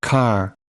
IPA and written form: kɑːr (car)